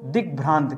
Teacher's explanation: क्या हो जाता है दोस्तों, अब देखिए या तो इसको क करिए, दिक और दूसरा शब्द लिखिए भ्रांत, दिक धन भ्रांत, तो ये जो शब्द बनता है दोस्तों, ये क बदल जाता है ग में, आधा ग हो जाता है और ये बन जाता है दोस्तों दिग्भ्रांत।